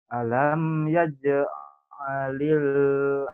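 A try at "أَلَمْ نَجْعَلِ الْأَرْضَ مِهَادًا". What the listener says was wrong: Oh, itu nun bukan ya. Tapi itu nun bukan ya. Alam naj.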